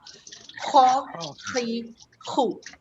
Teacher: kalau nak sebut huruf kha ni ada macam bunyi kesan nak keluar kahak